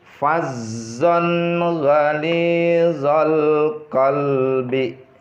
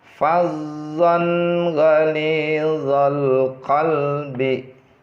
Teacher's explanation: Karena huruf ghain tadi bagian daripada huruf izhar, maka dibaca bacaan ini dengan jelas. Maksudnya dibaca dengan jelas itu tanpa didengungkan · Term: izhar halqi